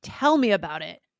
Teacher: when it's something negative we emphasize tell a lot more